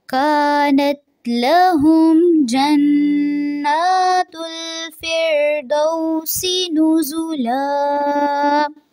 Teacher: جنات نون جو مشدد والا ہے اس پہ غنہ ہوگا، اس کو تھوڑا سا لمبا کریں گے، ناک میں آواز لے کے جائیں گے. فردوسی اس کو دو سی نہیں پڑھیں گے.